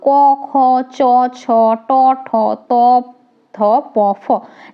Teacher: বর্গের প্রথম ও দ্বিতীয় বর্ণের উচ্চারণ গাম্ভীর্যহীন বলে এগুলোকে আমরা অঘোষ বর্ণ বলি